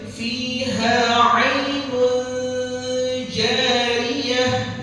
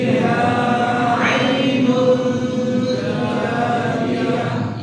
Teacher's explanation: Jadi kita sembunyikan bahasanya itu kalau ilmu tajwid kita sembunyikan nun sakinah, kita sembunyikan nun mati dan tanwin sampai tidak terdengar huruf nun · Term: ikhfa hakiki